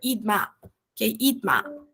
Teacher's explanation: a gente encara esse SS como um T ali. E aí a gente vai juntar com a próxima vogal